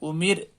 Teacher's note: اس سبق میں را کو باریک کر کے پڑھنا چاہیے